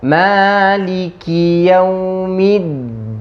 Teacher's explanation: Ditahan di huruf dal dan baca jelas, bukan at. Dibaca seperti huruf dal.